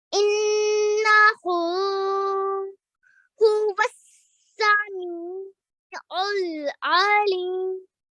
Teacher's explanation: Really, really good with your noon gunna there. You held on that sound for 2 seconds. You made sure you continued with your 2 second inverted dhamma sound there.